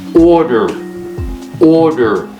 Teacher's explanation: the stress is on the first syllable not on the second